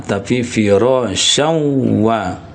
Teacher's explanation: maka syau itu ya bunyinya dimasukkan ke rongga hidung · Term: ghunna